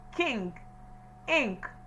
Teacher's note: In the production of this short vowel, our tongue comes forward. It is positioned forward. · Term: short I